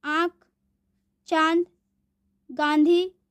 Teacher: अनुनासिक, इसका उच्चारण नाक और गले दोनों से होता है।